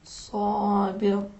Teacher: حرف صاد کہاں سے تلفظ کریں گے؟ سین کے جگہ سے تلفظ کریں گے. لیکن صاد کو تلفظ کرتے وقت ذرا سین کو موٹا اور پرحجم بنائیں گے.